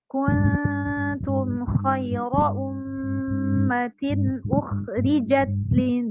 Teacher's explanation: ikhfa dibaca samar, didengungkan sebanyak 2 harokat.